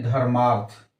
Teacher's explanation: धर्म में अ अर्थ में अ दोनों मिलकर के आ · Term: दीर्घ संधि